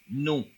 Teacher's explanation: O sea que se hace un sonido como nasalizado.